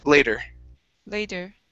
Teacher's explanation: flip that t to a flap flap t sound · Okay, at the very beginning, instead of saying later, okay, flip that T to a flap T sound.